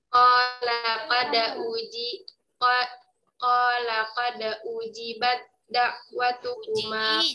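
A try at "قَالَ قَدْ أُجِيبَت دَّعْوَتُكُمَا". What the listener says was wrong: J-nya dipanjangkan mad tabi'i. Ya, ujibat Da, ya. Jadi taknya dileburkan ke huruf dal. Di sini idghamnya apa namanya? Ya, dari segi makhraj sifat dinamakan apa? Dari segi makhraj sifat mutajanisan. Dari segi harakatnya ya, dari segi harakatnya shaghir, ya. Dari segi harakatnya shaghir. Kemudian peleburannya sempurna atau tidak?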